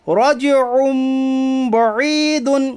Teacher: عین کے اوپر دو پیش کی تنوین ہے، دو پیش کی تنوین کے بعد با آیا اس لیے اقلاب ہوگا، یعنی دو پیش کی تنوین کو میم ساکن سے بدل کر غنہ کے ساتھ پڑھیے۔ یا ساکن سے پہلے زیر ہے اس لیے یا مدہ ہوگا، یا مدہ کو ایک الف کے برابر کھینچ کر پڑھیے۔